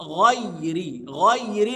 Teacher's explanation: غير انتقل من المفخم الى المرقق